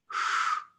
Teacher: The accent mark over an S indicates an SH sound, but an SH sound that is pulled back in one's mouth rather than right behind one's teeth. So instead of a high-pitched white noise, sh, it will be a low-pitched pink noise, sh. The bar over the vowels, I have already explained.